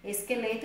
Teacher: Esqueleto eu pronuncio U, porém se escreve com O.